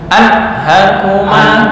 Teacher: anhakuma ini nun bertemu ha, enggak boleh dengung